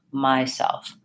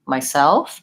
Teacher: what we really want is to be stressing the word the second syllable self and having the first rule will be short so myself not